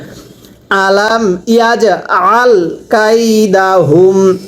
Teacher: এখানে ইয়াজ আল আইনটা উচ্চারণের সময় গলার মধ্যে চাপ দিয়ে পড়বেন